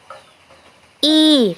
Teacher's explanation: suara kasrah adalah vokal tinggi di depan dengan kedua bibir agak Terentang ke samping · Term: suara kasroh